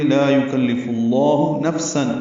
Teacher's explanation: فا ساکن پہ ہمس ہے